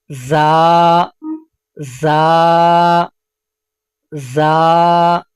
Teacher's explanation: یہ سیٹی والا حرف ہے، اس کو ادا کرتے وقت مخرج میں سیٹی کی آواز پیدا ہوگی